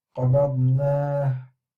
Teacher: I'm ending with the ha sound, but then I am circling my lips to make the al-Ishmaam.